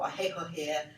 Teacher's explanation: And you drop in your final R's and you have heavy initial emphasis on your consonants